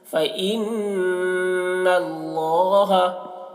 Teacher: نون مشدد میں غنہ ہوتا ہے تو نون میں غنہ کریں گے